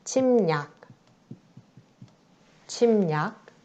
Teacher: 받침, 미음, 첫 번째 경우에 해당하죠. 받침, 미음 뒤에 오는 리을이 니은으로 바뀐다. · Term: 리을의 비음화